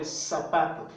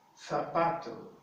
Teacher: in Latin American Spanish, the Z is pronounced as the S sound